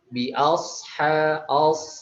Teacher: huruf shad yaitu mempunyai sifat itabaqah, melekat ke langit-langit atas ketika diucapkan. Lalu juga punya sifat isti'la, terangkat ya.